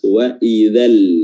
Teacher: Lamnya diizharkan, diperjelas, tidak samar-samar sama sekali, makanya dia harus betul-betul jelas. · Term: izhar qamariyah